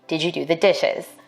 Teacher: African American speakers may be more likely to ask a yes-no question with a level tone or a falling tone. For white speakers, we expect a rising tone in questions like these.